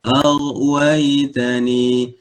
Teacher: ghain sifatnya adalah rakhawah, aliran suara